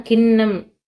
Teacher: மேல்வாய் அண்ணத்தோட நடுப்பகுதியை வந்து தொடுதா நாவின் நுனி